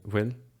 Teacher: sometimes the whole particle is just so unstressed that it just gets dropped. So you just hear bhfuil. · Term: elision